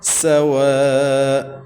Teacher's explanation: کفروا سواء علیہم، سواء، سین سٹی والے حروف میں سے ہے، سختی کے ساتھ یا سٹی کے ساتھ ساؤنڈ نکالیں گے۔ واو میں ہونٹوں کو گول کریں گے۔ واو کے بعد 5 الف کی مد ہے تو ہم نے 5 الف تک اس کو لمبا کرنا ہے۔